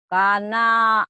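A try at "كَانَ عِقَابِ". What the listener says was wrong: K-nya panjang. Kalau K gini ada alifnya. Nanya pendek. Kana iqabi gitu.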